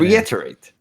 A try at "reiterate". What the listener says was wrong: You don't want to say the T as hard as it. It's like make it a D almost. Reiterate.